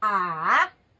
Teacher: first second is ah it goes up and the third is it goes down and then it goes up